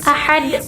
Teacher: Ahadun itu kan biasanya ada di akhir kalimat, tapi karena dia ini merupakan huruf qalqalah, maka dia dipantulkan atau dimatikan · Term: qalqalah kubro